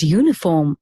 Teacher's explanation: although the word uniform starts with a vowel the sound at the beginning of the word is you the word therefore begins with the consonant sound so the article